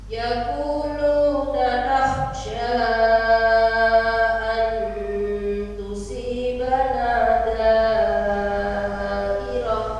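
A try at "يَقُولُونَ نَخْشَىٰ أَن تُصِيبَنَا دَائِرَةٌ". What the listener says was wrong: Saat baca tusibana harusnya tidak boleh nempel ujung lidahnya, renggang dulu. Bukan itu yang saya koreksi, yang tusibana.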